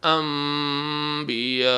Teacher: تنوین یا نون ساکن کے بعد بے آ جائے تو آواز میم میں بدل جائے گی اور وہاں پر غنہ بھی کریں گے